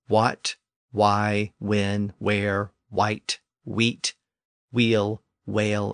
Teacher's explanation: English dialects still retain that pronunciation or a similar pronunciation but for the most part the initial H sound has disappeared from those words so today the initial consonant is really just the W sound